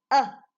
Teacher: the tongue is up but it's in the middle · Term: schwa